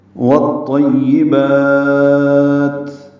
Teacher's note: تا ساکن ہے، اس میں سانس جاری رکھیں گے، ہمس ہوگا